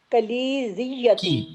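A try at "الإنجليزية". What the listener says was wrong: की किलीजिया, काफ पे कसरा है।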